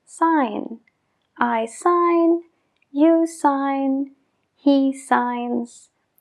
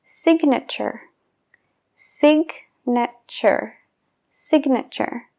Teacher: Entonces, en el verbo no pronunciamos esa G, pero en el sustantivo sí.